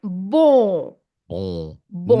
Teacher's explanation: the previous vowel, in this case an O, must be nasalated. So you have to say it through your nose.